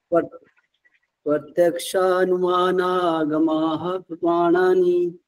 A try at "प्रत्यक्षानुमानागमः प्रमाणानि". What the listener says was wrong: नहीं आपने पोज नहीं लिया।